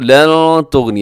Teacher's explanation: جی یہاں دیکھیے گا، ان الذین، یہاں نون مشدد پہ ہوگا جی غنہ، اور آگے کفروا لن تغنی، یہاں نون ساکن کے بعد تا ہے تو یہاں پہ اب اخفا کریں گے